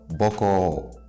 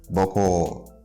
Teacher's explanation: Again, I'm raising the tone of the last syllable.